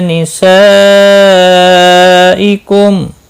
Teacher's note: لام کے اوپر کھڑی زبر ہے، ایک الف کے برابر کھینچ کر پڑھیں گے۔ نسائکم یہاں پر مد متصل ہے، چار الف کے برابر کھینچ کر پڑھیں گے